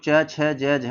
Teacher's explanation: ये जो च छ ज झ है ये तो तालब्य में आता है